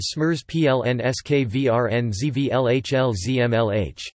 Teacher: Here zvlhl has two syllables based on L